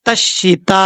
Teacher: زبان کی نوک اوپر والے دانتوں کی جڑوں سے لگے تو تا دو نقطوں والا پڑھا جاتا ہے، اور اس کو فل ماؤتھ نہیں پڑھنا ہوتا، یعنی پر نہیں پڑھنا ہوتا۔